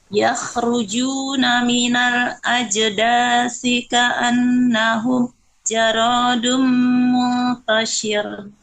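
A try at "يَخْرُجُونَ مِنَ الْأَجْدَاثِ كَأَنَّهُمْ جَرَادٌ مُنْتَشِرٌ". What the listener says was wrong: Eh Bunda untuk dengung ya, masih sedikit dengung di fa idgom gitu ya.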